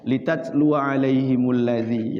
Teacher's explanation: Jadi ketika wasol terus bacanya wa-nya pendek, 1 ketukan ya, satu ketukan itu ya nggak ada mad ya.